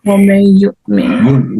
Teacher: You merge noon with ya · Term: idgham with ghunna